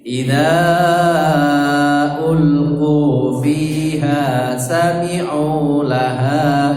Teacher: Jadi qu fiha itu tiga-tiganya bacaannya sama panjangnya, tidak boleh ada yang lebih pendek.